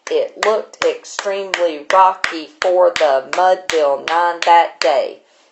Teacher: a very steady tempo write your meter is a very steady it is iambic so it's unstressed stressed